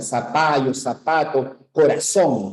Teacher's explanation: El ceseo es pronunciar la Z como S, ¿ya? Como la letra S · En América utilizamos el ceseo, porque no pronunciamos la Z, pronunciamos zapato con una S